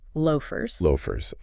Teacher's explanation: rounding your lips and making that long o sound followed by a short uh sound